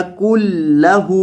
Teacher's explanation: یہ جو درمیان میں نون ساکن ہے اس کو نہیں پڑھنا، کاف کو لام کے ساتھ ملانا ہے، نون کے ساتھ نہیں ملانا.